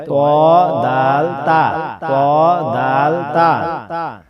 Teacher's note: জিহ্বার আগা সামনের উপরে দুই দাঁতের গোড়ার সঙ্গে লাগাইয়া তিনটি হরফ উচ্চারিত হয়